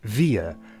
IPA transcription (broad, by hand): viə